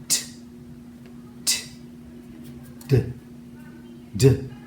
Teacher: and letter d we call these tip tappers or tongue stops the tip of your tongue touches the ridge of your mouth behind your teeth and then drops down